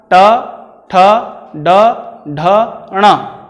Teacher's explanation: ये सभी वर्ण मूर्धा से बोले जाते हैं।